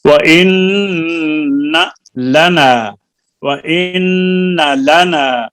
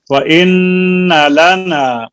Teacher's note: نون پہ بیٹا غنہ تو کریں، لیکن نون کی زبر کو اس کی مقدار سے زیادہ نہیں کھینچنا